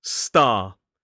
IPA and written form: stɑː (star)